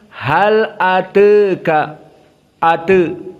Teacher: dia condong dari fathah kepada kasrah, namun perbedaannya condong sedikit. Dinamakan taklil.